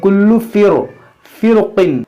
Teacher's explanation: را کو پر پڑھیں گے یعنی موٹا پڑھیں گے